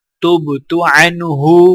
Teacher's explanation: نون کے اوپر غنہ نہیں کیا جائے گا کیونکہ آگے حروف ہلکی ہا ہے